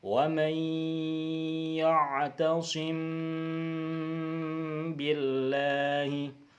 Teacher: Kemudian cara membaca ikhfa syafawi itu didengungkan. Jadi mim sukun itu dengan ba harus disamarkan, didengungkan dengan panjang dua harokat. Contohnya di slide ini adalah wa may ya'tasim billahi, ta'sim itu didengungkan ya.